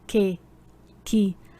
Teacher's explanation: Também o QU e GU quando seguidos de E ou I, cujo som fica que e ki. Perceba que ao pronunciar que e ki, você não ouve o som da letra U. Que, ki.